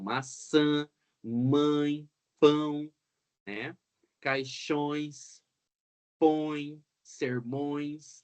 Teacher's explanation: tão vendo que o som fica bem nasalizado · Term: nasalidade